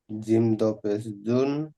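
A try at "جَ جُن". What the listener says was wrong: জিম দুপেশ না, জিম দুজাবার জান। দুজাবার এখানে নেই, একটা জাবার আছে, জিম নুন জাবার জান।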